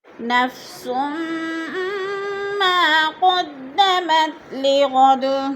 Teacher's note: سین کو میم کے ساتھ ملا کر ادغام کرنا ہے، کیونکہ میم مشدد جو ہوتا ہے یا مشدد حرف ہوتا ہے اپنے سے پچھلے حرف کے ساتھ مل کر پڑھا جاتا ہے۔